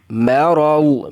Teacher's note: فی قلوبہم مرض، مرض، میم بریک، را کو اور ضاد کو پر پڑھنا ہے، لیکن را اور ضاد کی تفہیم کے اندر بہت زیادہ فرق ہے، ضاد کے اندر زیادہ تفہیم ہے